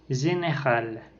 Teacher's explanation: c'est une voyelle antérieure mi-fermée, étirée et orale. Ce son se trouve dans le mot général.